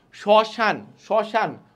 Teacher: শব্দে বা পদের প্রথমে মফলা থাকলে সে বর্ণের উচ্চারণে কিছুটা ঝোঁক পড়ে এবং সামান্য নাসিক্যকর হয় · মফলা যে শব্দের শুরুতে থাকে তাহলে কিছুটা ঝোঁক পড়তেছে এবং নাকের একটা টান আসতেছে